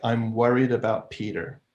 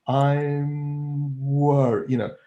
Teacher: You've got a couple of closed mouths in there, but the I'm, the M of I'm could be kind of narrow, where the corners of the lips are coming in because you're about to go into the W of worried. So I'm worried, so that M mouth is kind of narrow because it's been infected by its neighbors, being infected by the tight, narrow W of worried.